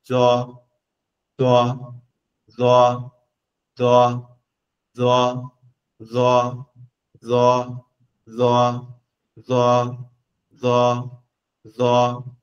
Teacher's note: জিহ্বার আগা, সামনের উপরে দুই দাঁতের আগার সঙ্গে লেগে উচ্চারণ হবে হালকা করে, বেশি জোর জবরদস্তি না।